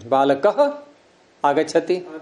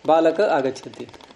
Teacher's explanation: कारण क्या है कि विसर्ग बोलते समय वायु जोर से निकलती है बाहर।